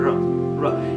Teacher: our tongue raises and we curve the tongue against the palate, and then we make a continuous sound r, r. If we hold the throat with the hand and produce the sound r, r, we feel the vibration.